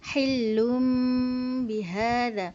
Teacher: Kita tukar, sepatutnya huruf nun kan, kita tukar huruf nun kepada bunyi mim. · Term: al-iqlab